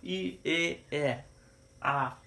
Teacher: আমরা সম্মুখ সন্ধ বলছি কারণ যখন আমরা উচ্চারণ করছি জিহবাটা সামনের দিকে চলে আসছে